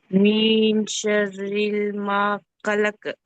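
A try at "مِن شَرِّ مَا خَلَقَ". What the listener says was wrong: ఒకసారి చూడండి, షర్రిల్ చదివారు మీరు, లామ్ లేదు కదా ఇక్కడ. ఇక్కడ ఇఖ్ఫా చేయాలి, దీర్ఘం తీయాలి.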